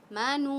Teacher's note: واو ساکن سے پہلے پیش ہے تو ہم واو کو کھینچ رہے ہیں